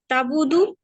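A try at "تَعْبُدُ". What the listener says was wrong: ना ना, बा नहीं, बा को नहीं निकालेंगे, पहले आइन।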